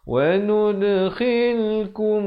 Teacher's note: Di sekali dibacakan dengan idhar syafawi, sempurnakan bunyi mim mati, terus masuk. Wanud, diberikan lantunan pada huruf dal, khalkhalah di situ.